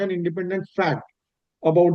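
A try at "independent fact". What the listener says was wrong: नहीं, फैक्ट को फैक्ट मत बोलिए, इंडिपेंडेंट फैक्ट को एक साथ पढ़िए।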